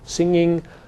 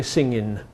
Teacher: the form with the velar nasal being high and that with the alveolar low